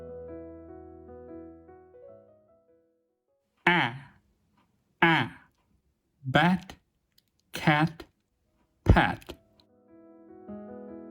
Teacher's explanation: This vowel is produced with unrounded and wide open lips and a relaxed tongue. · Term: low, front vowel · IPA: /æ/